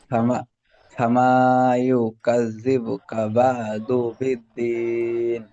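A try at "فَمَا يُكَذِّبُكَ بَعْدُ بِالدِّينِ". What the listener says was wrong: সুন্দর পড়েছেন, বানান করেন।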